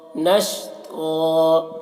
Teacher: تو کی آواز موٹی ہوتی ہے، منہ بھر کر اس کی آواز نکلتی ہے